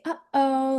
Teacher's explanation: that's a very hard glottal attack and a hard glottal stop